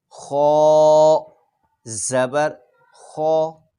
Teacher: آگے چوتھی لائن خو زبر خو، اس حرف کو پر یعنی موٹا پڑھنا ہے کیونکہ یہ حروف مستعلیہ میں سے ہے